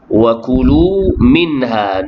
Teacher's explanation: nun mati bertemu dengan ha, izhar kijelah bacaan nun mati